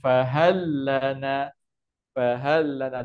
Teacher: Dia masuk habis sebab ada sabdu. Jadi lam yang pertama dah tak bunyi. Jadi terus bunyi lam yang kedua.